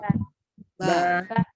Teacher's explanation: Ba, ya, baru ketika ba, gimana huruf ba, makhrajnya Ba. bertemunya dua bibir bagian dalam